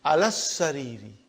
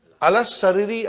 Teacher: I did not pronounce alif, I did not pronounce lam. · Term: shadda